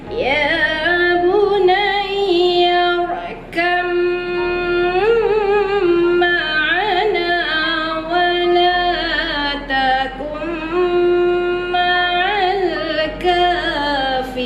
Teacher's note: jadi di sini ba bertemu dengan mim, kita kena dengungkan. Sebab apa? Mim itu bertanda dengan syaddah.